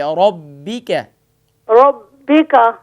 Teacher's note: را کو فل ماؤتھ پڑھیں موٹا کر کے